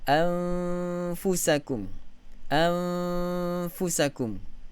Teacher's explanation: Sebab bentuk bibir kita fa terus menyebut huruf fa. Makhraj huruf nun itu tidak lagi berfungsi pada lidah. Kerana huruf fa, makhraj huruf nun itu tidak berfungsi dengan tepat pada bahagian lidah. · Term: ikhfa